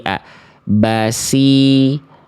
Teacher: huruf shadnya tadi enggak naik pangkal lidahnya sehingga yang keluar huruf sin. Ingat, shad dan sin ini cuman beda pangkal lidah loh teman-teman.